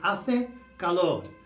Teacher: Notice you don't say the H, it's A and E and A and O.